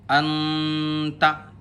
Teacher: نوک زبان تالو سے ہٹا کر، اردو میں پنکھا کے نون کو پڑھتے ہیں اتنی دیر 1 الف کی برابر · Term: اخفا